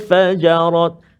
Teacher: Antaranya satu lagi perlu kita beri perhatian, iaitulah pada ayat ataupun kalimah fajarat. Nun mati bertemu dengan fa, dengung dua harakat, ikhfa ha hakiki kan.